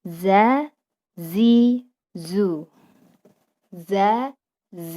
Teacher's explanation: Keluar dari ujung lidah sama seperti sa, keluar dari ujung lidah diletakkan pada dinding bagian dalam gigi seri, ini bagian bawah, dan pangkal lidah tidak terangkat. Dan ada suara desisan yang menyertai saat huruf keluar. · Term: huruf dza, huruf za